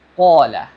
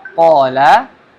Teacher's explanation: Huruf qaf dengan mat tabi'i ya, ada alif mati sini, maka mat tabi'i ya. Qala, mat tabi'i panjang 2 harokat. Dan huruf qaf ini perlu diperhatikan ya.